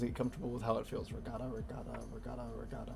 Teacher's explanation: there isn't any trilling or rolling sound it's just one light touch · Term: light tongue flicks